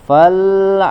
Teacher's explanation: di huruf lam Tidak ada pantulan suara karena bukan huruf H Qalqalah jadi ditahan di makhrajnya kemudian ucapkan langsung huruf setelahnya Ain Fal seperti itu